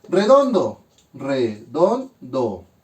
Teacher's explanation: Sílaba tónica en don, por lo tanto es una palabra grave.